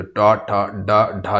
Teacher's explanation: जो टा ठा डा ढा जो होता है ये आपका क्या है, मूर्धा से बोले जाने वाले व्यंजन है।